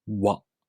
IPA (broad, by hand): wa